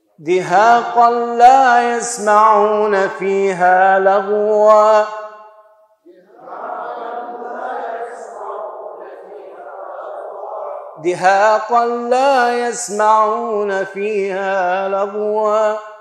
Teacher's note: تنوين مع لام إدغاما كاملا بلا غنة